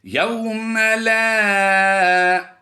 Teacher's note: واو لین کرتے ہوئے بغیر لمبا کر کے پڑھنا ہے. یوم لا الف مدہ کی وجہ سے لمبا کریں گے.